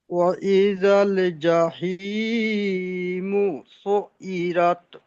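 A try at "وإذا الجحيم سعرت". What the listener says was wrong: সুইরাত নয়, রত, রটি পুর হবে। রর উপরে সাবারত থাকলে র পুর করে পড়তে হয়, র পুর করবেন। ওয়াইদাল জাহিমু সুইরাত, র।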